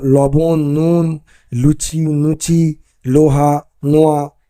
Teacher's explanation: ল কোথাও কোথাও ন রূপে উচ্চারিত হয়